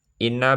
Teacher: Karena nun bertasjid, bacaannya berdengung. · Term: gunah